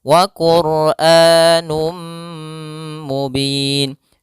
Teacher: P hafal Num kembali ada dhamatain bertemu mim yaitu idgam bhunah masukkan tanwinnya kepada mim dan ditahan